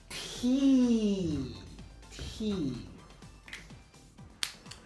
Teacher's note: T is a fortis stop. Similar to P. It is alveolar, which means it is pronounced on the alveolar ridge of the mouth.